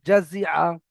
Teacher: আইন জাবার আ, জাজি আ, জাজি আ। আইনটা একটু গলার ভিতরে যাবে, জাজি আ। দেখেছেন এই পুরো পড়াটার মধ্যে কোনো জায়গায় একটু টান হলো না।